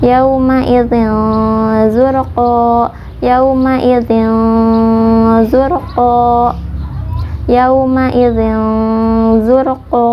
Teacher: Makhraj za yaitu ujung lidah sejajar dengan ujung gigi seri bawah